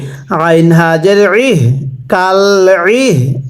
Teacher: আইনটা উচ্চারণের সময় গলার মধ্যে একটু চাপ দিয়ে পড়তে হবে।